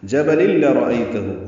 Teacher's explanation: لام کو لام سے ملانا ہے، یہ ادغام کامل ہے ، لرأیتہ لام کو جلدی ادا کرنا ہے، باریک پڑھیں گے،